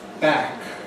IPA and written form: bæk (back)